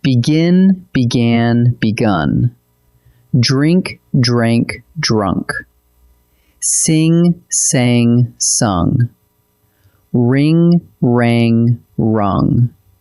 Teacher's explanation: Now the third family, and this one has a little music in it. Here, all 3 forms are different, and the vowel walks from I to A to U.